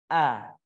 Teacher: huruf hamzah ini berada di tenggorokan bagian bawah